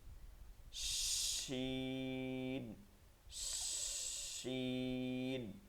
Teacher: মধ্যখানি তালুতে লাগবে তবে সেটার মাঝে একটু ফাঁকা সামান্য ফাঁকা হয়ে যাবে এই ফাঁকার কারণে এখান থেকে একটা বাতাস বের হয়ে যাবে এই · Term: তাফাসসির হরফ